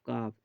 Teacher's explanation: জীভের গোড়া হতে একটু আগে বাড়িয়ে তার বরাবর উপরের তালুর সাথে লাগিয়ে উচ্চারিত হয় মধ্যখান পেঁচানো কাফ